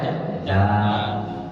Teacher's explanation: Ujung pangkal ujung lidah bertemu dengan pangkal gigi seri atas